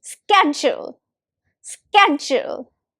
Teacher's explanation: The first syllable is sk and the second is jewel.